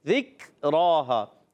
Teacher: کاف باریک حروف میں سے، ذکرہا، تو کاف کو باریک رکھنا ہے، را پر کھڑا زبر ہے، ایک الف کھینچنا ہے۔